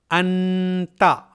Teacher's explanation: انتا یہ اظہار ہے کیونکہ اس میں نون ساکن کی آواز ظاہر ہو رہی ہے